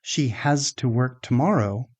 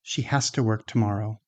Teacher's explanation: But natural conversational speech often sounds more like has-ta. The z, the voiced z, becomes voiceless before the t.